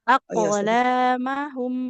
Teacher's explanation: Ba, jim, dal, to, kof. Nah, di sini kita ketemu sama kof sukun. Berarti harus memantul. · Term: qalqalah